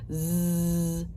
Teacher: it's got that vibrating tingly feeling in your tongue